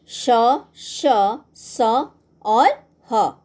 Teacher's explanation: ऊष्म व्यंजन, जिन व्यंजनों के उच्चारण के समय मुख के अंग एक दूसरे के इतने निकट आ जाएं कि बीच से हवा संघर्ष या घर्षण करती हुई निकले, तो ऐसे व्यंजनों को ऊष्म व्यंजन कहते हैं।